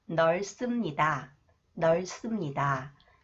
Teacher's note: when 시옷 comes after the final consonant 리을, 비읍, it is pronounced 쌍시옷, 스 sound.